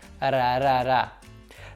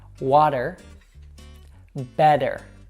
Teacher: We call this an American T, and it sounds very similar to the R sound in some Latin languages like Spanish and Portuguese. It's just a quick tap of your tongue behind your teeth.